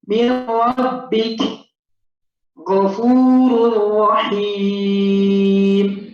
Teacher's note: Dan ketika bertemu dengan lam ra, ya, maka nun sukun atau tanwin dibaca langsung masuk kepada huruf di depannya seperti baca tasydid biasa